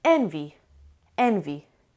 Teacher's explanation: Envy has two syllables and the stress is on the first syllable.